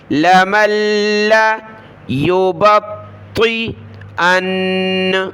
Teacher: طا بڑی طا ہے تو اس کو موٹا پڑھیں اور سخت کریں تشدید کی وجہ سے.